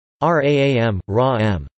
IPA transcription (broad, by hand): raːm